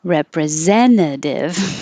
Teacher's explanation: you don't hear either of those t's